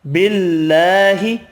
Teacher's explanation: اللہ کا نام والا لام زیر کی وجہ سے باریک پڑھیں گے